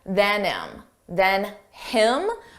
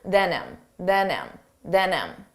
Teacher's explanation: Notice how you don't hear the H on him, than him. But if we want to combine those sounds together and say it like one word, then him.